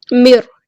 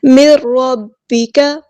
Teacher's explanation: نون ساکن کی بار را آیا ہے تو ادغام ہو رہا ہے، ادغام بلا غنہ ، ادغام کامل بلا غنہ ہو رہا ہے یہاں پہ، مر،